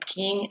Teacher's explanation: The k sound is a voiceless stop sound. The sound for k is k, as in the beginning of king and the end of back. · The k and g sounds are produced by the back of the mouth. These are velar sounds.